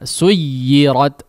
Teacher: Suj la, tapi kalau memang kita mau panjangkan suy ya, tetap ada mengalirkan udara meskipun dia bertanda tasydid ya. Meskipun menghentak tapi dia tetap mengalirkan udara. Suyirat, jangan suj mati ya, tidak seperti itu prakteknya.